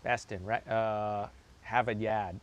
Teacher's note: You got that non-rhotic Boston accent.